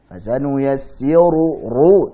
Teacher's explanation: Fasanuyassiru dan ru tebalkan. Riwayat Hafs huruf ra dhammah dibaca tebal. Jangan fasanuyassiru ru tipis salah.